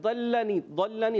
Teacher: ضاد موٹا رکھنا ہے، ضل ضاد موٹا لام باریک